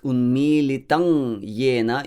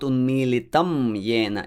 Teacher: It's not N and it's not M, it's ng. you sort of place your tongue on the roof of the mouth and your air goes into your nose. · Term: anusvara